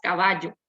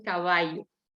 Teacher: El yeísmo viene a sustituir esa doble L por la Y, y esta Y va a tomar una pronunciación parecida a la I o básicamente como la I.